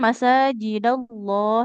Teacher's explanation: Lafaz allahnya tebal. Karena ee didahului oleh huruf berharakat fathah.